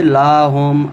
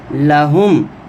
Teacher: لام کو لمبا نہیں کریں گے